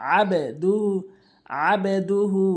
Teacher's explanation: এখানে কলকলা হরফ বা রয়েছে, নিচের দিকে উচ্চারণ হবে